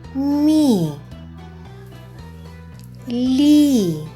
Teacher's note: і пом'якшує приголосні які стоять перед нею